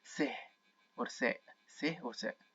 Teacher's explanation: The letter tha in the modern standard Arabic is pronounced as seh, seh in the Egyptian dialect